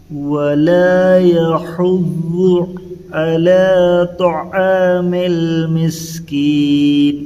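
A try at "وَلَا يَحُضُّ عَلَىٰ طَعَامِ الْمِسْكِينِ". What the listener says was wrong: یہ تھوڑا عین ادا کیجئے۔ ولا يحض حادونا يحض على طعام المسكين۔ ماشاءاللہ، یہ تو ضاد ادا کرنا بہت ضروری ہے، یہ دو جگہ بھی عین اور طا کو موٹا پڑھنا۔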